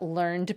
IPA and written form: lɝnd (learned)